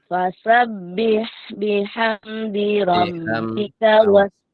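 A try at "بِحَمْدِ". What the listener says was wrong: Dengan biham, biham. Sempurna kasrohnya.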